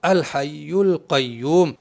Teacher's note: اس حمزہ سے پڑھنا اگر ہم شروع کر رہے ہیں جیسے الحی القیوم تو یہ حمزہ پڑھنے میں آ رہا ہے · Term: حمزہ وصلی